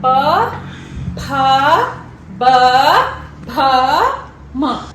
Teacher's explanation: प वर्ग के जितने भी मेंबर्स होंगे उसका उच्चारण स्थान सेम ही होगा। प वर्ग के जितने भी मेंबर्स हैं उनका उच्चारण स्थान क्या है, हमारे लिप्स आपस में टच होते हैं।